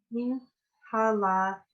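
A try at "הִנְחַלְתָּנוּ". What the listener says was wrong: Hin, chal, tanu. So they said the chet, it's not an H, it's a CH. In chai or l'chaim, chai is life, l'chaim is to life.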